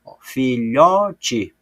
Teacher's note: Então, eu circulei a sílaba tônica, o lhó. Filhote, o lhó, eu falo com mais intensidade, porque ela é a sílaba mais forte.